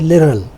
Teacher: It is not actually D, it is close to R. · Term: flap